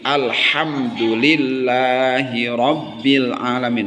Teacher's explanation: Lafaz Allah ini dibacanya tarkik tipis karena lafaz lam Allah ini setelah kasroh.